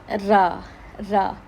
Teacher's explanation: ہماری زبان طرف اللسان اور ظہر اللسان کا سرہ، ثنایا اور رباعی کے مسوڑے سے لگے